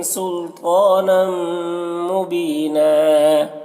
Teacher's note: نم میں ادغام ناقص ہو رہا، غنہ کے ساتھ میں پڑھیں گے۔ · طا کو پر پڑھنا ہے، حروف مستعلیہ میں سے ہے، اور کھڑا زبر ہے جو الف مدہ کی طرح ہے۔